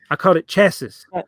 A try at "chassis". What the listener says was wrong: Yeah, the S is silent. Chassis.